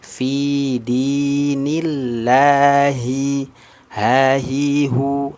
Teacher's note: ketika ada lafzul jalalah, lafal Allah didahului dengan harokat kasrah, maka dibaca tipis. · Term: tarqiq